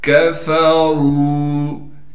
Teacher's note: फा को बारीक पढ़ेंगे। रा को मोटा करके पढ़ेंगे और रा को एक अलिफ की मिकदार खींचेंगे